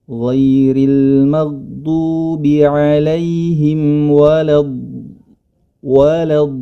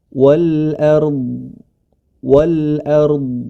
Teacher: ada suara istitalah ya suara yang memanjang